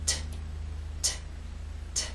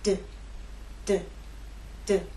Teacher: T is quiet, it's unvoiced, and D is voiced. So you'll feel no vibrations when you make the true T sound.